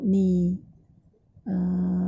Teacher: Makhraj huruf nun, hujung lidah sentuh pada gusi atas.